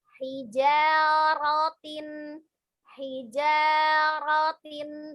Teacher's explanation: huruf ro berharokat fathah maka dibaca tebal.